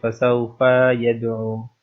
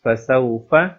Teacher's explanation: make sure that you don't stretch the fa here